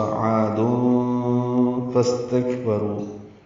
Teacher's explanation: عین وسط حلق سے ادا کرتے ہوئے 2 حرکات لمبا کریں گے